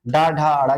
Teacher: डा ढा अड़ा क्या हो जाएंगे बताइएगा सघोष हो जाएंगे